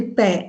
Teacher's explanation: P com lábio inferior e lábio superior, fechamento total da passagem da corrente de ar e liberação abrupta desse ar